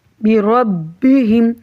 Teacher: با پہ شد ہے تو ایک دفعہ مضبوطی کے ساتھ اور ایک دفعہ جماؤ کے ساتھ